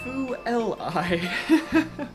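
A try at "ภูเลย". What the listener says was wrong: Phu, it sounded like Phu L I. Can you do it again?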